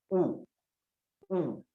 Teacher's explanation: आप जब उ का उच्चारण करते हैं तब आपके ओष्ठ उ हो जाते हैं, ओठों से वो उच्चारण होता है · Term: ओष्ठ्य